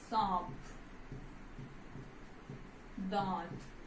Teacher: इनका उच्चारण करते समय वायु जो है वो मुख और नाक दोनों से निकलती है। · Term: अनुनासिक